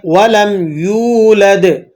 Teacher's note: وَلَمْ یولد، یا واو پیش یو ہے، تو آپ اس کو ایک حرف کے برابر کھینچ کر پڑھیں گے